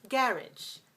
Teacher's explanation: Garage, that's two syllables stress the first, 2-1, garage.